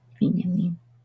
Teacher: in Hebrew it's Vinyamin with accent on the last syllable